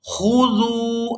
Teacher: یہاں ذال کو واو ساکن کے ساتھ ملائیں گے تو کھینچ کر ادا کریں گے کیونکہ یہ واو مدہ ہے۔